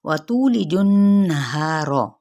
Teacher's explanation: وَتُولِجُ النَّهَارَ، اب یہاں پہ بھی تو پہ مد اصلی بالواو کا قاعدہ، لام کی زیر کو لمبا نہیں کریں گے، جیم کی پیش کو نون کے ساتھ ملائیں گے تو غنہ کریں گے، ٹھیک ہے.